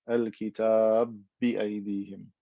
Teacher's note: The ba with fatha, al-kitaba, got merged into the second ba. It became one ba with shadda.